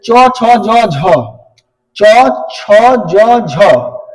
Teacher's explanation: जीभ जो है तालु में टकराएगा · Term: तालव्य व्यंजन